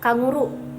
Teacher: konsonan yang dihasilkan oleh belakang lidah dan langit-langit lembut. Contohnya ada K dan G, misalkan pelafalannya kanguru. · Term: velar